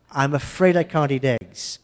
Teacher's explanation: And the T is tapped.